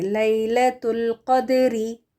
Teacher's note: قاف موٹا دال ساکن قلقلہ کریں گے اور اس کو ادا کریں گے.